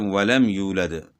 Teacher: میم میں غنہ نہیں کرنا ہے، تو اس غنہ نہ کرنے کو اظہار کہتے ہیں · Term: اظہار شفوی